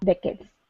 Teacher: it's decades stress at the beginning